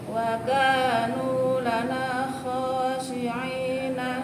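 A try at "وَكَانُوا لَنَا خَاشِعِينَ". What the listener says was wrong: Wa kanu lana khashi'ina. Perhatikan huruf shinnya J.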